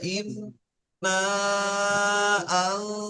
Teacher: এখানে এক আলিফ নাকে তুলে গুন্না করতে হবে